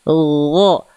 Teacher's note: dilafalkan dari tenggorokan paling atas Bunda. Seperti melafalkan huruf kha tapi enggak keluar nafas.